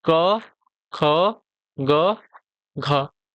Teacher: क, ख, ग, घ ये आपके कंठ होते हैं।